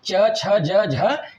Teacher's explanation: स्पर्श संघर्षी का मतलब होता है कि मुंह से जो वायु निकलती है बोलने के क्रम में, वह स्पर्श करते हुए संघर्ष के साथ निकलती है। इसलिए यह जो चार वर्ण हैं च, छ, ज, झ, इसको स्पर्श संघर्षी कहते हैं।